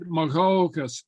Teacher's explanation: That's a nice pronunciation of that DH sound, that open guttural.